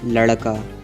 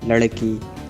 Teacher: Masculine nouns mainly end in the sound ah, where feminine nouns mainly end in the sound e.